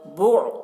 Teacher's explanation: आइन को हलक से अदा करेंगे